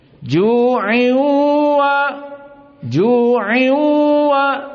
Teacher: DII syahidnya dua harakat ini dinamakan idgham tanwin masuk kepada wau Idgham dan wownya di sini dalam keadaan ghunah